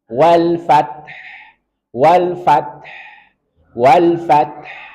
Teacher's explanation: Kita tetap harus baca huruf H-nya, jangan sampai hilang.